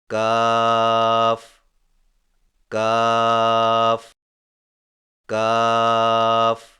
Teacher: کاف کی ادائیگی میں زبان کی جڑ کو کوے کے قریب تالو پر لگا کر باریک آواز میں پڑھیں